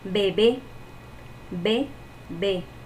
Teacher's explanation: La sílaba tónica sería B, la segunda B. Y sería una palabra aguda.